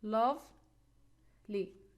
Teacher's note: we have short e sound it's weak so we put the stress on the first syllable